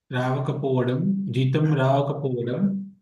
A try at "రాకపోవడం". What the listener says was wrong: జీతం రాకపోవడం. Not రావకపోవడం అండి. రాకపోవడం. జీతం రాకపోవడం.